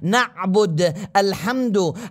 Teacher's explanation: حرف العين تخرج من وسط الحلق وكذا حرف الحاء